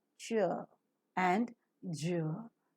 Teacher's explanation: in an affricate this air that is held up in the oral cavity which is compressed within the oral cavity is released slowly with a slight friction this makes the sound an affricate in English we have two